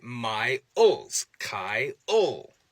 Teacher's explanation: But for two, when we see a diphthong push up against a dark L, what we often see is something that can be called pre-L break-in, where people will insert yet another vowel, a central vowel called a schwa, into the mix